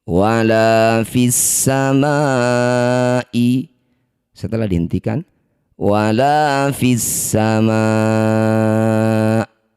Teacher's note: Ma ini panjangkan 6 harokat, huruf terakhir hamzah sukunkan. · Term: mad arid lis sukun